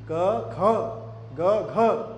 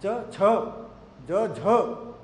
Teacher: झ तो दूसरे चौथे पे आप अधिक प्राण लगा रहे हैं अधिक वायु आप बाहर कर रहे हैं तो ये दूसरा चौथा जो होता है वो महाप्राण होते हैं